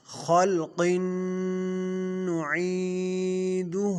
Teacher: خلق میں خا جو ہے یہ حروف مستعلیہ ہے، قاف بھی حروف مستعلیہ میں سے ہیں، یہ دونوں حرف موٹے ہوں گے۔